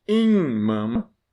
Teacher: Só essa vogal prolongada, que é in mama, e muda o sentido.